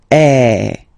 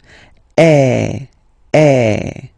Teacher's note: So it's really open. I mean, the sound is really open, and normally your mouth should be opened a little bit more than with the accent aigu as well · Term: accent grave